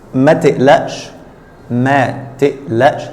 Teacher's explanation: Here the qaf is pronounced like hamza, as usual in the Egyptian dialect.